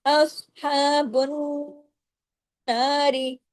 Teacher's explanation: अस में स्वाद हैवी ह को लंबा खींचना है अलिफ के बराबर और बुन जब पढ़ेंगे नून के के साथ जाके जुड़ेंगे तो नून पे तशदीद की वजह से बड़ा गुना होगा।